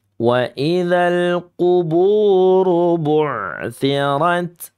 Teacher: Nah, ini kategorinya lahnun jali, ya, penyimpangan yang berat. Karena merubah huruf yang harusnya ain sifatnya tawasud malah ke hamzah sifatnya syiddah. Dan ini termasuk bagian dari sifat mutadadatu, sifat huruf hijaiyah yang memiliki lawan, ya, syiddah, tawasud, rakhawah.